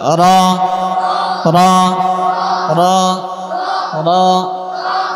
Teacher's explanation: জিহ্বার আগার পিঠ ওপরে লাগিয়ে 10 নাম্বার মাখরাজ